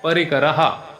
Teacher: रच्या नंतर विसर्ग शेवटी आला आहे, तर त्या ठिकाणी विसर्गाचा उच्चार ह होणार